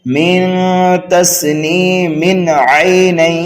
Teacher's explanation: ملا کر کے پڑھیں گے تو پھر اظہار حلقی ہوگا تنوین کے بعد عین حروف حلقی میں سے آنے کی وجہ سے